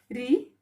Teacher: तो री, जो री से ऋषि होता है, इसका उच्चारण मूर्धा से होता है। आप री का खुद उच्चारण करिए, री, इसका उच्चारण मूर्धा से होता है, ठीक है।